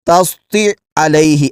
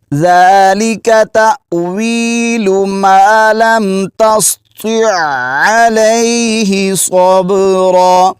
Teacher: یعنی آپ نے عین کو حلق کے درمیان والے حصے سے ادا کرنا ہے اور عین کو جماؤ کے ساتھ ادا کرنا ہے، اور پیچھے جو تو ہے اس کو پر پڑھنا ہے، کیونکہ اگر اس کو باریک پڑھیں گے تو یہ تا ادا ہوگی، تو تو کو پر کرتے ہوئے عین کو جماؤ کے ساتھ ادا کریں گے تو یہ لفظ صحیح طور پر ادا ہوگا۔